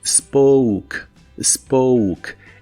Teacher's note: La O se pronuncia como si tuviera una U delante y la E del final es muda.